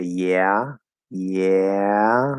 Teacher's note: sort of have this little like schwa after the ah. We kind of, the tongue is up here, yeah, and then we just let the rest of the tongue drop after going into ah.